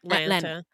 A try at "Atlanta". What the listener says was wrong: Don't say the T's. Atlanta.